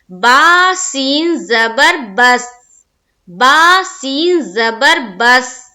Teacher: یہاں پر سین کے اوپر ہماری آواز بالکل رک جائے گی۔ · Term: سکون